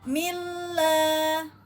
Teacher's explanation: pada mim kasroh kemudian bertemu dengan lafaz Allah, maka dibaca tipis, ya, tarkik.